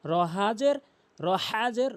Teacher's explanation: বলতে হবে রহাজের রহাজের হলকের মাঝখান থেকে